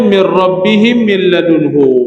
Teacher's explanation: Yang pertama idgham bila ghunnah. Iaitu idgham tanpa dengung. Huruf idgham bila ghunah ada dua, ra lam yang terhimpun dalam kalimah ralla.